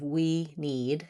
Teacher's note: /i/ while it is a long duration vowel in many words can also be held for a short time but the vowel sound doesn't change